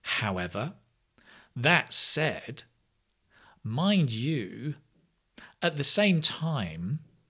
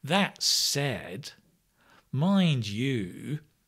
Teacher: notice with most of these, we have that falling, rising intonation.